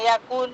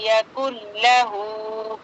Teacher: लाम पे रुकना नहीं है, फौरन आगे बढ़ जाना है